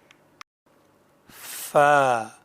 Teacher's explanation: فا ثنایا علیہ کے کنارے اور نچلے ہونٹ کے اندرونی حصے کے ملنے سے ادا ہوتا ہے